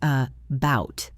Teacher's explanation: In the word about the A at the beginning is a schwa. It sounds like a bout.